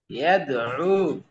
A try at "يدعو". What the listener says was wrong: ইয়াদউ ইয়াতে গলা আসবে না। ইয়া নরমাল থাকবে ইয়াদউ